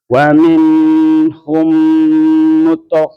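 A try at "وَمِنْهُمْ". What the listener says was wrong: Nanti wa minhu jangan lama ya. Wa minhum langsung aja. Nun itu idhar ya. Wa minhum baru mim ketemu mim.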